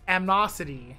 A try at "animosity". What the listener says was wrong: You're missing a syllable.